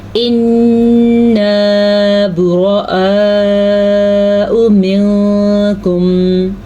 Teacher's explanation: غنہ، نون کے اوپر شد آنے کی وجہ سے غنہ، براء، پھر سے کھڑی زبر اور مد 2 چیزیں آنے کی وجہ سے یہاں پہ ہم نے مد کو ادا کرنا ہے۔